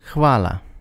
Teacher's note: you have a h sound in there. You have a soft F. You have a light L.